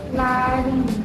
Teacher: kayak R-nya itu lebih bergetar di lari